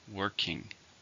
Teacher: 2 syllables, stresses on the first.